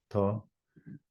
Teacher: So that's dental tha. So that's tha where you put the tongue close to the teeth.